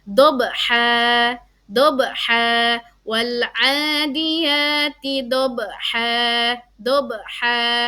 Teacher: Qalqalah yang dibaca mantul ya tetapi pantulannya tidak terlalu kuat nak ya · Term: Qalqalah sugro